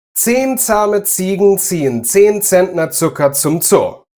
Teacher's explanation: The sounds should be really sharp. If you sounded like a bumblebee buzzing around, you got it wrong. · It never makes the voiced Z sound